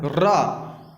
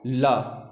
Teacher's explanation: तो लुंठित रा है, पार्श्विक ला है।